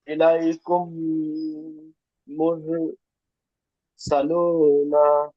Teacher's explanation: মিম সাকিনের পরে মিম আসলে হুম, মিমকে মিমের সাথে মিলিয়ে একালি পরিমাণ গুণনা সহকারে করতে হবে